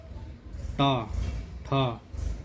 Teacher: जीभ का आगे वाला हिस्सा, ये तालू से टकराता है। टा ठा, ये आगे वाला टच कर रहा है, मुड़ भी रही है जीभ, तो ये मूर्धन्य व्यंजन कहलाते हैं।